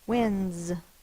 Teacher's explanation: And then we drop the beginning part and put the S. My voice is on, so we're going to turn our voice on for this one, so it's the Z.